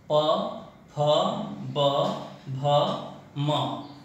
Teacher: बिना स्पर्श करवाए बोल नहीं पाएंगे। प वर्ग में अपने दोनों होठों को आपस में हम टच करवाते हैं, स्पर्श करवाते हैं। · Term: ओष्ठ